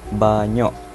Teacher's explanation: Glotalisasi. Proses ini berlaku disebabkan oleh sesuatu fonem berubah menjadi hentian glotis. Konsonan velar ke dan ge yang berada di posisi koda atau akhir kata dalam suatu kata.